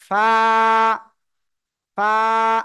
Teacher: নিচের ঠোঁটের পেট সামনের উপরের দুই দাঁতের আগার সাথে লাগিয়ে এক আলিফ টানিয়া হালকা বাতাস বের করিয়া উচ্চারণ করিতে হবে